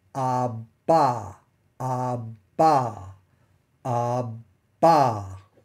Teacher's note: making while you're making the B that is while you can you've got your lips pressed together for the B sound you'll feel a burst of air when you let go of it when you open your lips to get to the following ah